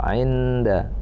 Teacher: nun mati ketemu dengan dal, ainda itu ikhfa, samar-samar berdengung